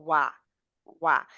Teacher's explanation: पहले गोल होता है और फिर खुल जाता है जैसे स्माइली मुह हो जाता है